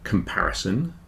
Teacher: if you listen to the word comparison you'll see that the second syllable is stressed the second syllable is much bigger like the Apple those four